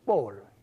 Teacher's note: So it's a falling tone.